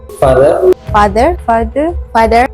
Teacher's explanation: All the subjects shortened the pronunciation of a to cot. The vowel sound in this word was also changed from o to o by all of the subjects.